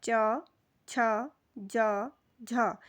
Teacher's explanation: अगर आप इनका उच्चारण करेंगे तो आप देखेंगे कि आपकी जो जीभ का आगे का भाग है वो आपके मसूड़ों का जो उभरा हुआ भाग है उसे छूता है, स्पर्श करता है। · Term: वत्स वर्ण